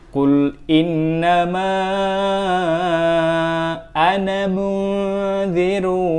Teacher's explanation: kata ana yang dibaca pendek meskipun ada harokat alif setelahnya. Oke, jadi kita tetap baca pendek meskipun ada huruf alif di setelahnya.